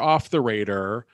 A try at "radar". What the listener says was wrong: Do you always say Raider? Raider. You said it's off Raider. Well, because you said it and then I was like Raider and then you just kept going.